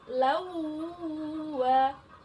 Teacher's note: hukumnya idgham bighunnah bacaannya harus demung idgham bighunnah jadi lawu wah dengungnya ditahan tiga harakat jadi tiga ketukan